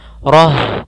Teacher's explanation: ketika kita waqaf pada huruf ta, maka ini huruf ta-nya kita ganti dengan huruf ha yang dimatikan